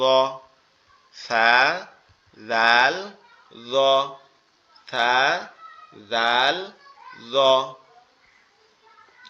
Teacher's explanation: জিহ্বার আগা সামনে 2 দাঁতের আগার সাথে লেগে উচ্চারিত হয় 3টা অক্ষর